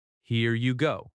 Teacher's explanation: That falling intonation shows confidence.